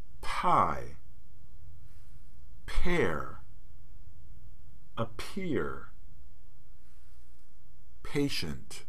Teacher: we use the aspirated allophone of p.